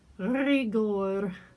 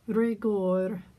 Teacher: really need to have a rolled r at the beginning of that word